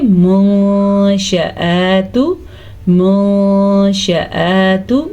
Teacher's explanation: नून साकिन या नून तनवीन के बाद हरूफ इख्फा में से कोई हर्फ आ जाए तो वहाँ पे नून साकिन या तनवीन की आवाज़ को छुपा के पढ़ते हैं